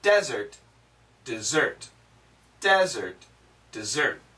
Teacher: both of them use a Z sound Z not an S sound